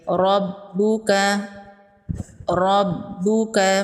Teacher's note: را پر زبر ہے، را کو پر پڑھیں گے۔ با پر تشدید ہے، با کو ڈبل پڑھیں گے۔ تشدید والے حرف کو 2 بار پڑھا جاتا ہے۔